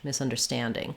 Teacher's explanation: in misunderstanding the misunder and the ing are very short and the Stan or stand is stretched misunderstanding these three are almost the same duration as the Stan